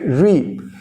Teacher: if there is a kasra on the ra, then we say it with an empty mouth. So it is a softer sound